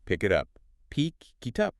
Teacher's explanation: It happens when a word ends in a consonant sound and the next word starts with a vowel sound. The consonant just jumps over to the next word. · The K from pick links to it, and the T from it links to up. It becomes one smooth word, picky up. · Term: catenation